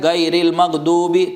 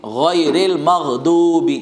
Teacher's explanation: دیکھیے جو اوپر کا حصہ اس کا نام بتایا تھا ادنائے حلق، اس سے غین اور خا ادا ہوتے ہیں، غین اور خا اوپر کے حصے سے، غین اور خا یہ اوپر کے حصے سے ادا ہوں گے، اور دونوں کو موٹا پڑھیں گے، پتلا نہیں پڑھیں گے۔ اگر آپ نے غین نہیں پڑھا، گائن پڑھا تو یہ اردو کا گاف بن جائے گا